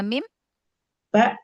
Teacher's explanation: Mim dengan ba keluar dari dua bibir yang dirapatkan.